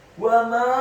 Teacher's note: Wa ma, huruf wawnya dibaca fathah 1 harokat, huruf mimnya dibaca fathah 4 sampai 6 harokat. Karena setelah huruf mim ada alif dan di atas harokat fathah huruf mim ada harokat bendera.